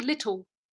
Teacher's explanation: dark L turning into like a w sound so little could either be like an L release like that